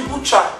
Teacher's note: A tendência a pronunciar como semivogal o I seguido de vogal é mais forte no sul do Brasil do que nas demais regiões.